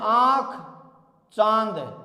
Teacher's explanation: अनुनासिक जिनका उच्चारण करते समय नाक और मुख दोनों से ध्वनि निकलती हो। इसको हम चंद्र बिंदु द्वारा प्रदर्शित करते हैं।